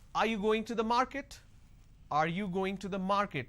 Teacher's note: So when I say, are you going to the market, there is a rising tone.